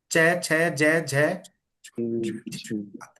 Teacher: च छ ज जीभ तलवे के अंदर है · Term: तालव्य